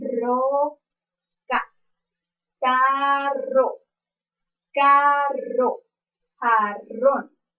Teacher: este fonema se clasifica en su modo de articulación como vibrante y su punto de articulación es alveolar pues la lengua y los alveolos se unen al priar a